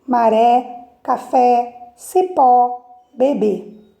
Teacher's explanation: Oxítonas, a sílaba tônica mais forte é a última.